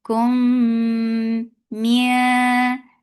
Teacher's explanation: keep the sound in your nose for a longer time because it has akmal ghunna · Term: idgham shafawi